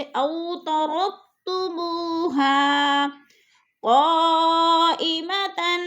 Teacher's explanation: بولین کو ہم نے لمبا بھی نہیں کرنا اور جھٹکا بھی نہیں دینا، جیسے او ترکتموها، منہ پہ وہ مدہ ہے اور ہاں پہ الف مدہ۔ وہ مدہ الف مدہ ایک الف دو حرکات کے برابر لمبا کر کے کھینچے جائیں گے، جیسے او ترکتموها قائمة۔